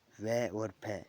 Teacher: वै और फै ये दंत और ओष्ठ से बोले जाते हैं।